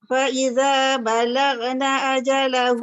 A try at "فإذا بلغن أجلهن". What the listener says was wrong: jangan balag. Dia tebal. Ghain tu huruf isti'la.